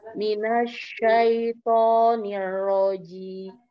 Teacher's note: Di minasyaito jangan terputus, minas seperti terputus, seperti sakta.